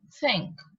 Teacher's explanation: my tongue is coming between my teeth